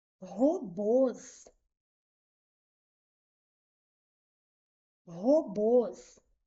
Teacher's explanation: A última sílaba é mais forte, né? Ok. É oxítono aqui.